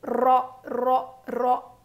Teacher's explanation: रो रो की आवाज़ मोटी होगी और रो को हम मोटा पढ़ेंगे, आवाज़ ऊपर जाएगी, मुंह भर के पढ़ेंगे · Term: रो मोटा